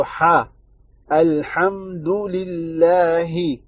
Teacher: ہا ہے گلے کے بیچ میں سے نکلے گا، نہ کہ گلے کے آخری والے حصے، یعنی اقصی حلق سے نہیں نکلے گا، وسط الحلق سے نکلے گا۔